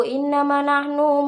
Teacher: Lalu pada kata innama terdapat hukum bacaan gunnah yang dibaca dengan dengung ditahan 3 harokat